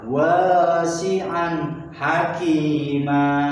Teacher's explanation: Nah, jadi wasi'an hakimah itu dibaca idhar karena tanwin fathah bertemu dengan huruf ha. Ha adalah huruf idhar, maka dibaca terang tanpa mendengung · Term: idhar khalqi